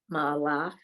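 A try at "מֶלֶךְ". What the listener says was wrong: look at your vowels. Melech.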